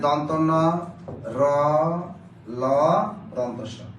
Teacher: দন্ত মূলীয়, অর্থাৎ দাঁতের গোড়া দিয়ে উচ্চারিত হয় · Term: দন্ত মূলীয় ধ্বনি